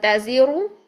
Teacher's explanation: یہاں پر را کو پیش کی صورت میں موٹا پڑھ رہے ہیں، منہ بھر کے ادا کر رہے ہیں، لیکن جب ہم اس کو سائلنٹ کر دیں گے، اس کی حرکت کو ختم کر دیں گے، دین اس سے پیچھے جو ہے وہ زیر ہونے کی وجہ سے، یہاں پر زیر ہونے کی وجہ سے ہم اس کو جو ہے وہ باریک کریں گے را کو، تزیر، تزیر.